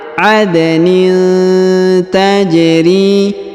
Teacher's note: huruf da berharokat sukun ya, maka kita pantulkan atau kita kolkolahkan.